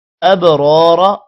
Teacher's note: با پر قلقلہ ہوگا، اور را موٹا ہوگا اور الف کی وجہ سے لمبا بھی ہوگا. دوسرا را بھی دوسرا را بھی موٹا ہوگا، جبکہ دوسرے را کو لمبا نہیں کرنا.